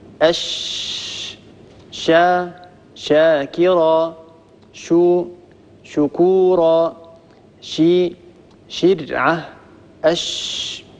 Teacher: نلاحظ أن حرف الشين يخرج من وسط اللسان، وهي المنطقة الملونة باللون الأزرق، مع ما يحاذيه من وسط الحنك الأعلى. نلاحظ أن المخرج لم ينقفل تماما، هناك فراغ وهناك تجويف يمر منه صوت الشين ويمر منه الهواء. · وهي أيضا حرف مهموس يجري فيه النفس